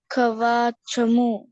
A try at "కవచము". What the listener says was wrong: అవా కాదు, దీర్ఘం ఇయ్యద్దు. కవచము.